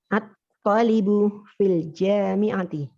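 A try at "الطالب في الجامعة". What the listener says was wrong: At-nya dibaca ya. Nah, sahih.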